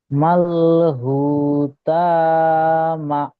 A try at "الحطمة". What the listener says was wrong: ত টান হয়ে যাচ্ছে। মাল হুতামাহ। মাল হুতামাহ।